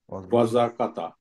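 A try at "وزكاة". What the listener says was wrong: না, কাতা কেন? আলিফ থাকার কারণে কাটা টান হবে। ওয়াজাকাতা।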